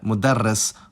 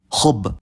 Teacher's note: Arabic has phonemic consonant gemination, which is when a consonant is held for a longer time. This can happen either in the middle of the word as part of a morphological pattern, like in mudarris, or at the end of some words when the last 2 root letters are the same, like khub.